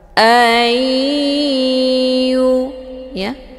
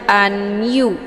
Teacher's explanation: bunah atau juga disebut dengan Idam maalunah cara bacanya huruf nun sukunnya dileburkan ataupun dimasukkan ke dalam huruf ya dengan cara ditekan kemudian ditahan lebih kurang dua kali ketukan a ya jadi hukum bacaan Idgham bhunah dibacanya sambil didengungkan jadi